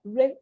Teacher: Or if it's in a syllable on its own, where you can sound it, say like the word river. You have two R's, but you're only hearing one, river.